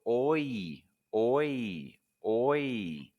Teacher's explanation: for the oi sound you're going to start with an o and quickly move to a slight e which is a smiling so oi oi oi for the O